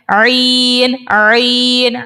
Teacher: عین جب ہم ادا کرتے ہیں تو اس میں جو ہے آواز تھوڑی سی اسکویز ہوتی ہے، ہم جیسے کپڑے کو نچوڑتے ہیں نا، ایسے ہی ہم نے عین کو نچوڑنا ہے۔